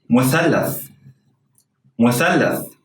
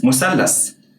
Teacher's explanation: In standard Arabic, S is pronounced like an unvoiced TH sound, as in the word think